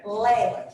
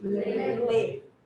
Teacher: Vocês conseguem ver que quando você pronuncia lé, você abre um pouquinho mais a boca? O movimento que você faz é um movimento mais de abertura da boca. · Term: fonema mais aberto